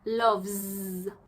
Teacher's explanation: V. It's vibrating. So, it's voiced.